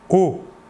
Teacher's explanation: Alors que pour le O, qui n'est pas nasal, vous ne sentirez pas d'air passer sur votre doigt. O. L'air sortira entièrement par la bouche.